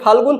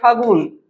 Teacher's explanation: ফাল্গুন থেকে কি হচ্ছে ফাগুন, তাহলে এই যে লটা লোপ পেয়ে গেছে, যেটা লোপ পেয়ে গেছে গেছে, ওটার পরিবর্তে কিন্তু কেউ আসেনি। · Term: অন্তর্হতি